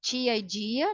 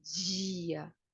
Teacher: Alvéolo palatal, né? Quando tia e dia, né? Quando é falado assim, que isso caracteriza o falar carioca